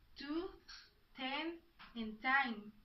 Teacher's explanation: In English, the sound is aspirated and produced with a strong puff of air. The characteristics of these sounds are voiceless, Place of articulation is alveolar and the manner is plosive.